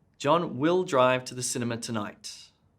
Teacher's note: i put emphasis on the word will